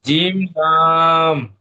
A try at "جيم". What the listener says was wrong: জিমটা টান নেই, 3 আলিফ টান দেন। জিম লাম।